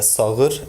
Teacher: the Şanlıurfa dialect doesn't allow deletion of soft G when it's preceded by a back vowel. and followed by a vowel, it's pronounced as a voiced velar fricative